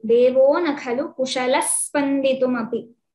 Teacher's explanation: if we are taking a pause after devaha, so we chant the visarga, or else if it is devo, it is to be chanted continuously.